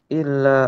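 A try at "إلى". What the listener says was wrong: Ila di situ tidak ada tasdid ya. Bedakan ila dengan illa, artinya sangat berbeda.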